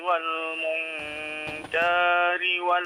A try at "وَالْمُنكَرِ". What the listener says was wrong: Jangan dipanjangkan. Wal munkari wal baghi.